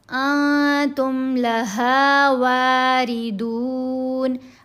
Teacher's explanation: انتم لہا واردون، ان تم نہیں پڑھنا، تم، نون ساکن کے بعد تا، تو یہ احفا ہے۔ یہاں پر احفا میں نون کی آواز کو ناک میں چھپایا جاتا ہے۔ انتم لہا واردون، را کے نیچے زیر آئے تو را کو باریک پڑھتے ہیں، را کے اوپر زبر ہو یا پیش تو را کو موٹا پڑھنا ہے۔